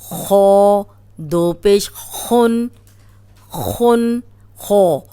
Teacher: اب خو موٹا ہے، تنوین کے ساتھ بھی موٹا ہی ہوگا۔